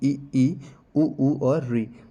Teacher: जिन स्वर वर्णों के उच्चारण में मुख द्वार लगभग बंद रहता है उन्हें हम बोलते हैं समृद्ध स्वर।